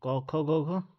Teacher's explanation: क वर्ग का उच्चारण स्थल कंठ